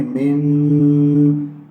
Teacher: یہاں نون ساکن کے بعد شین ہے، غنہ کریں گے